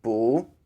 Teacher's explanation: so you can't close your mouth all the way boo and then you say it with a rising intonation